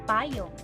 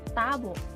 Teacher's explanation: Sa pagbigkas ng letrang T, ito ay pangipin na pasara at walang tinig.